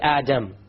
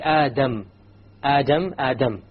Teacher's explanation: The difference is that the English D only uses the tip. Okay? So when you try to pronounce the English D, you only use the tip.